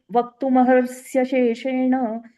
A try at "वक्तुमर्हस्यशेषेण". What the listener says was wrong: महर नाही. वक्तुमर्हस्य आहे ते. र आधी घ्यायचं आहे, म नंतर.